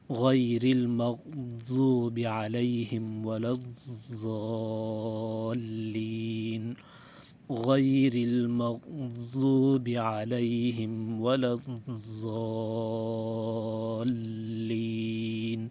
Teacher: اور ایک اہم بات یہ ہے کہ ضاد کے مخرج میں ایک صفت پائی جاتی ہے، ضاد کے حرف میں صفت استطالت، یعنی جب ضاد کو ادا کریں گے تو آواز کچھ دراز ہوگی، اس کا بھی خیال کرنا ہے۔